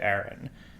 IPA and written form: æɹɪn (Aaron)